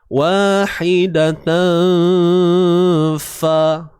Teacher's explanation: Jadi makhraj bagi huruf fa ni ialah di bahagian bibir kita ni, bibir mulut. Bibir bawah ditolak ke gigi atas ini.